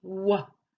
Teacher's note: it comes from the back of your throat wha and it comes through your lips and like a kiss formation of your lips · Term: W sound